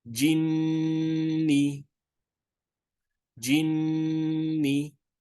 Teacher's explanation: So here we have nun shadda again. So don't forget to nasalize for 2 counts.